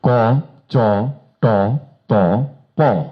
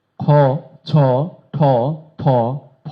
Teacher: এটি পড়তে গেলে এই লাইনের চেয়ে অনেক বেশি বাতাস লাগে। উচ্চারণ স্থান একই, প্রথম লাইন যেখানে উচ্চারিত হচ্ছে, দ্বিতীয় লাইন ঠিক সেইখানে একইভাবে উচ্চারিত হচ্ছে। পার্থক্য শুধু একটি, প্রাণ একটু বেশি, বাতাস একটু বেশি।